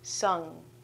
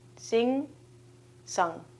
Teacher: we close off our vocal cords right away so that we don't actually say the ga at the end. It's a very short sound.